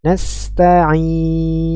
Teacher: Mad Ar sukun pada kata nastain nastain ya empat harakat